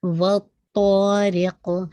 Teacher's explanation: make sure کیجیے گا واو کو موٹا نہیں کیجیے گا